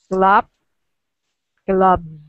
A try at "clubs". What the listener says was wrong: Good with that Z sound, right?